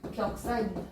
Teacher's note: 앞말이 자음 기역으로 끝나고 뒷말이 반모음 이로 시작합니다. 하지만 니은 첨가 안 합니다.